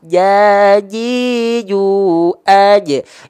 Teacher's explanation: Jadi gak ada percikan nafas.